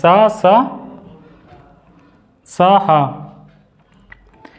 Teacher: दांत और मसूड़े के पास से इसका उच्चारण होता है सा का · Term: ऊष्म संघर्षी